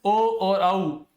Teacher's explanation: ध्यान दीजिएगा, ए दोई तू कंठ तालु, यानी कि ए और आई इनका जो उच्चारण होता है वो कंठ व तालु से होता है, और ओ और औ, ये दो तू, ओ और औ इनका जो उच्चारण है वो कंठ और ओष्ठ से होता है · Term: कंठोष्ठ